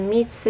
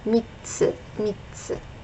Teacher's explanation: So we have mi, tsu, but we're gonna double this T sound. So now there's 2 T sounds. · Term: small tsu